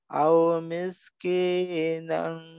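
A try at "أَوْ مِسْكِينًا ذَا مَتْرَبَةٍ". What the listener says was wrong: Kina, jangan ki. Panjang-panjangin. Au miskina, kinya sekali ayun aja. Sama kayak za, jangan panjangin.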